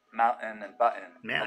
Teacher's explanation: with just a pure glottal stop uh for that t sound in the middle of the word